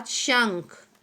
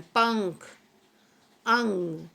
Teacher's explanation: आपको लगेगा कि आप नाक से भी बोल रहे हैं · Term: अनुस्वार